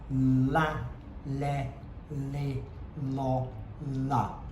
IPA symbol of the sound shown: l